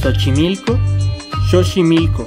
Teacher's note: en el náhuatl suena como una sh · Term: La X